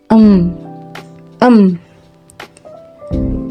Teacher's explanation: langit-langit lunak beserta anak tekaknya diturunkan bibir bawah menekan rapat pada bibir atas · menekan rapat pada bibir atas karena poin 1 dan dua maka jalannya udara dari paru-paru melalui rongga mulut terhambat dan keluar melalui rongga hidung pita suara ikut bergetar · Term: konsonan nasal bilabial